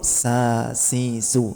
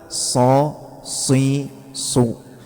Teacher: Lawan dari ini istifal semuanya tipis semuanya pergerakan lidahnya turun ke dasar mulut. Bedakan sin sama shad ya itunya istilla sama istifalnya · Bedakan sin sama sod, yaitunya isti'la sama istifalnya itu. Kalau sin turun sa si su, ketika sod terangkat so si su.